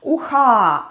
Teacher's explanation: Ah is stressed and it's more opened.